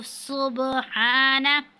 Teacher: اب با ساکن ہے تو یہاں پہ ہم قلقلہ کریں گے، اور ہا پر کھڑی زبر ہے، اس کو ہم تھوڑا سے کھینچیں گے۔